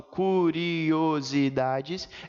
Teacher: Vejam que nesse caso, gente, quando eu falo curiosidades, eu tenho a presença de um hiato e não de um ditongo